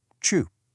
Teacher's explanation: your tongue is curved back and the tip touches the roof of your mouth